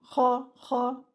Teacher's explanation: The kha here should be read with the bubbling sound in it.